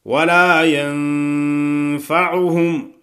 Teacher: نون پہ غنہ کرنا ہے اخفاء والا، ولا ينفعهم، عهم، این کو اپنے مخرج سے ادا کرنا ہے۔